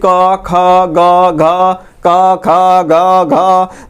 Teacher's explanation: आप क ख का बोल रहे हैं तो यहाँ पर गला के पास काफी ज्यादा घर्षण रहा है, बाकी कोई क ख ग घ ङ दांत ओष्ठ जीभ सब चुपचाप मुकुरिया कर देख रहा है कि ये भाई ये क्या हो रहा है, तो कंठवे ना सब कुछ कर रहा है, ये सब चुपचाप क्या है शांत है, अभी कुछ हिलडोल नहीं कर रहा है।